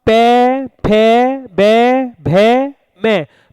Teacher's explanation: देखिए हमारे जो होठ हैं वो आपस में टच हो रहे हैं, मिल रहे हैं, यानी इनका उच्चारण होठों से हो रहा है।